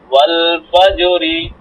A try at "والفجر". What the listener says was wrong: ফাজো হয়ে যায় কেন? ফাজে, ফাজে নিচের দিকে দেন, আওয়াজ নিচের দিকে দেন।